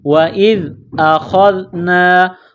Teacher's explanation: زال کے ساتھ ملائیں گے، زال کو پڑھتے وقت زبان باہر نکالیں گے، زال کو نرم پڑھیں گے۔ · خا کو موٹا کرنا ہے، خا کو زال کے ساتھ ملانا ہے۔ جس طرح انسان گلے سے بلغم نکالتا ہے اسی طرح اس خا کو نکالیں گے۔